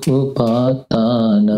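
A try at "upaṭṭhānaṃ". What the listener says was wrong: No, it is not upatanam. Wait. Upattha. TT. It has two dots down there.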